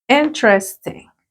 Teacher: La mayor fuerza de voz a la primera sílaba.